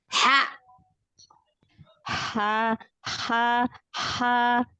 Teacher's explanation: huruf H yang kecil, yang dari tengah tenggorokan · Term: H kecil